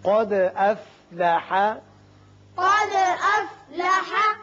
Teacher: دال ساکن ہے، اس کی صفت قلقلہ ادا کریں گے اور قاف کو پر پڑھیں گے